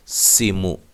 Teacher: سین کو باریک سیٹی سے، اور سین اور میم کو لمبا نہیں کرنا، یاد رہے زبر زیر پیش والے حرف کو لمبا نہیں کریں گے۔